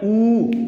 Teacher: अपने होठ को गोल कर लेते हैं और यहीं से उच्चारण हो जाता है ऊ का, तो इसको कहते हैं ओष्ठ स्वर, ओष्ठ स्वर, इसको ओष्ठ कहा जाता है, ओष्ठ स्वर।